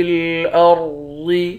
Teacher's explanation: یہاں پر را اور ضاد ان دونوں حرف کو موٹا پڑھیں گے